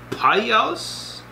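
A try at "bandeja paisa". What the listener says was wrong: Add the extra vowel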